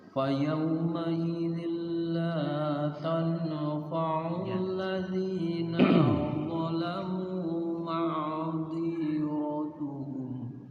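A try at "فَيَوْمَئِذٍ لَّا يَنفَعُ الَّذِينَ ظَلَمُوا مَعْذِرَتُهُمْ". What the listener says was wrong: Ulang, bukan tanfa'u, yang fa'u. Ya, fa yawma idzil la yanfa'u alladzina zalamu ma'dziratuhum.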